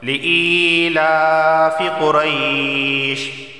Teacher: یہاں دیکھیں یا ساکن ہے اور اس سے پہلے حمزہ کے نیچے زیر آیا ہے، تو یا ساکن سے پہلے زیر ہونے کی وجہ سے اسے ایک الف کے برابر کھینچ کر پڑھا جائے گا